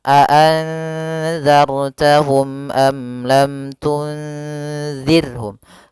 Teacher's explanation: Karena izhar syafawi yaitu apabila ada mim mati bertemu seluruh huruf hijaiyah kecuali mim dan ba, maka dia dinamakan dengan izhar syafawi. Maka ketiganya harus jelas suara mimnya dan tidak boleh ditahan